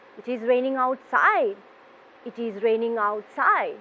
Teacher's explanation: your voice is going down towards the end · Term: falling intonation